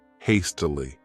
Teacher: This word has 3 syllables, and the stress is on that first syllable, hastily. What it means is just excessive speed, that you are doing something quickly, rapidly, and with great urgency.